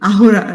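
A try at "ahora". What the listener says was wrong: আওরা, এটাকে বলা হচ্ছে আহোরা বলে না, এটাকে বলা হচ্ছে আওরা।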